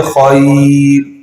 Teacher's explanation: را ساکن سے پہلے یا ساکن ہو تو را کیا ہوگی؟ بولیں بھائی، باریک ہوگی